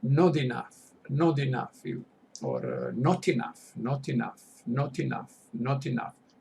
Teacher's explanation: It is linking. They pronounce it linking, connected, like one word.